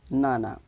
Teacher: the child usually drop the first syllable the syllable ba and only pronounce the last two syllable nana so when the adult say banana the child says nana to